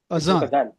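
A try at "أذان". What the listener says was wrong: It's the same. No, it's adan with the same letter. No, not azan. Adan. Yes, it's a mispronunciation. Sadly, these 4 letters are here. People pronounce them as the same thing. They're not the same thing.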